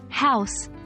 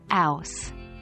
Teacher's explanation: the H sound at the beginning of words might be dropped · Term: H dropping